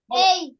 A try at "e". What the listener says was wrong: ই এর সাউন্ড এই কেন হয়? ই এর সাউন্ড এ, ই এর সাউন্ড এ, তাহলে এখানে মিডিল লেটার হচ্ছে এ।